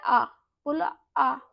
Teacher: आप जब बोल रहे हो तो आपकी जीभ के बीच का उठ रहा है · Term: मध्य या केंद्रीय स्वर